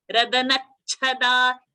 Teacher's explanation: So when we are saying that na, we include cha into that and then say cha with a mahaprana. · when we are saying radanachada, cha is half, cha is a mahaprana. So that na will have a nice good pressure.